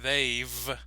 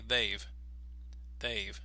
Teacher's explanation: disappears so it's a very very short sound you'll notice that most North American speakers don't really emphasize the V that strongly so instead of saying they've they will say Dave Dave so